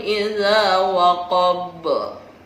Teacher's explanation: jadi lebih memantul daripada Qolqolah Sugro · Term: Qalqalah kubro